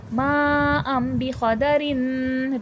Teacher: मा खींचेगा और यहां पर तनवीन मीम में तब्दील हो जाएगा। मा अम कदरिन रन में दो ज़ेर है।